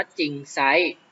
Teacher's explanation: จะออกเสียงเฉพาะพยัญชนะตัวหน้าไม่ออกเสียงตัวรอนะครับ จะออกเสียงเฉพาะตัวหน้าเท่านั้นนะครับตัวอย่างเช่นตัวจริงไซร้อ่านว่าจริงไซส์นะครับเศรษฐี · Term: คำควบไม่แท้